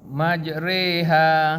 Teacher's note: Memiringkan bunyi fathah kepada kasrah. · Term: imalah